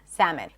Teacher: make sure it's 2 syllables, salmon. Schwa at the end